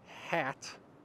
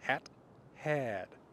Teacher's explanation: If you look at the word hat, that is a short a vowel, whereas had is a long vowel